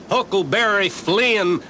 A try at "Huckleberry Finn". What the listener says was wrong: Finn. He was Huckleberry Finn, not Flynn.